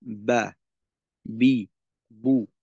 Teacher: বা এর ক্ষেত্রে দুই ঠোঁটের ভিজা অংশকে ব্যবহার করতে হবে · ঠোঁট স্বাভাবিক অবস্থায় রেখে চাপ দিয়ে বা উচ্চারণ করতে হবে।